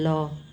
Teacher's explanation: ल को पार्श्विक व्यंजन इसलिए बोलते हैं कि इनका उच्चारण करते समय जीभ का जो निचला हिस्सा है तालु को स्पर्श करता है